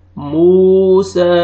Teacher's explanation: واو مد آ رہا ہے، واو جزم سے پہلے پیش ہے، میم کو آپ نے کھینچنا ہے. موسا.